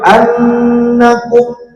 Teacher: ada huruf nun yang bertasydid maka harus didengungkan selama dua harakat. Ya, dihukuminya adalah gunah.